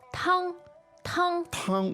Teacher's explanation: the word for soup is 汤. tang, which is first tone